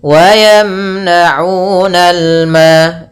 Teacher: Wa yamna'unal ma, di situ ada alif lam qamariyah, yaitu alif lam yang ditulis dan dibaca dengan jelas